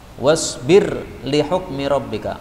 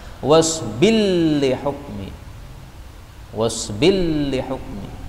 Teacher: Kemudian di sini ada idgham, wasbir li hukmi rabbika, ra-nya boleh diidghamkan pada lam